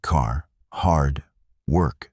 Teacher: In American English, the R is strong. It is not soft. It is not rolled. It is clear and controlled in words like car, hard, work. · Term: The sound of R